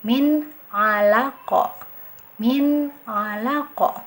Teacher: huruf Ain Nah di sini ada nun mati Bukan tanwin ya bertemu salah satu huruf izhar halqi yaitu Ain cara bacanya jelas